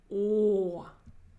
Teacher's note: the vowel is so much darker than in other languages oh look at my protruded lips and it's a very dark and deep sound